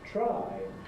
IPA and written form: traɪ (try)